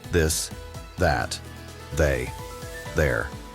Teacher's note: For strong th like in that. Vibrate your voice too.